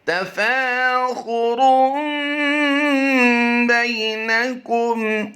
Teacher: خا کو پر کریں گے، را کو بھی پر کریں گے۔ تفاخر بینکم، بے کو لمبا نہیں کریں گے، یا لین ہوتا ہے۔